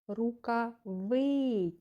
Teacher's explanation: третій склад він говориться голосніше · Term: наголошений склад